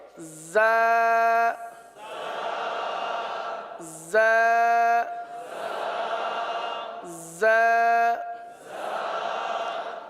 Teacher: نیچے کی جانب رہ کر زا سیٹی کی آواز کی طرح اس حرف کی آواز نکلتی ہے